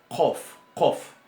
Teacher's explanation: Ese sonido es como una letra C, pero que se pronuncia un poco más atrás, en la úvula. O en la parte detrás del paladar blando.